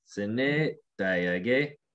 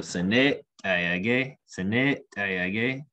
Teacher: So it's like the long e before the glottal t.